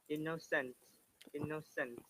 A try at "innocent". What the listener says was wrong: no innocent. One N. Remember, that's the rule. If you have pronounced innocent before, just forget it from today. It is innocent.